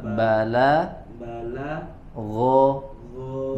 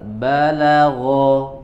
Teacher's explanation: ba dan la-nya tipis, ghoinnya tebal